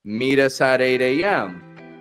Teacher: if a word is ending in a T and the next word begins in a vowel sound, that's the clearest flap T.